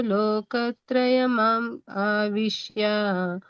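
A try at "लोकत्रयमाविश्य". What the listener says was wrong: ಲೋಕತ್ರಯಂ ಆವಿಶ್ಯ ಅನ್ಬೇಕು, ಇಲ್ಲದ್ರೆ ಲೋಕತ್ರಯಂ ಆವಿಶ್ಯ. ಲೋಕತ್ರಯಮ ಆವಿಶ್ಯ ಅಂತ ಹೇಳ್ಬಾರ್ದು. ಲೋಕತ್ರಯಂ ಕಟ್ ಮಾಡ್ಬೇಕು. ಹಂಗೆ ಹೇಳ್ಬೇಕು. ಹೇಳ್ಬೇಕು ಅಂದ್ರೆ ಲೋಕತ್ರಯಂ ಆವಿಶ್ಯ. ತ್ರಯಂ ಮಾವಿಶ್ಯ ಅನ್ಬಾರ್ದು. ತ್ರಯಂ ಮಾವಿಶ್ಯ. ಹಂಗ್ ಬರ್ಬೇಕು, ಇಲ್ಲರೆ ತ್ರಯಂ ಆವಿಶ್ಯ.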